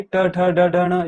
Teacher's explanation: ये मूर्धा के स्पर्श से निकलती है ट वर्ग की आवाज